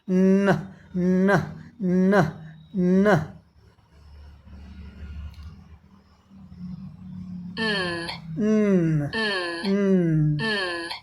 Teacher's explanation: Tongue touches roof of mouth, air goes through nose, हवा बाहर निकल जाती है नाक से। हमारे गले में कंपन भी होता है।